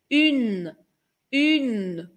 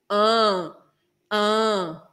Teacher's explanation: pudesse ter uma câmera dentro da minha boca você veria que minha língua encosta no céu da boca para formar o n